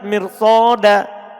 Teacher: Kalimat mirsoda ini ro-nya dibaca tebal. Padahal dia setelah kasro asli.